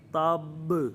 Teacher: قوی درجے کا قلقلہ ہوگا، سب سے واضح قلقلہ، سب سے بڑے درجے کا قلقلہ ہوگا